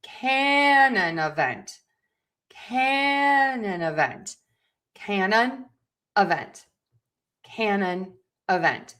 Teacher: we are going to stress syllable number one can. And we are going to stress syllable number four vent.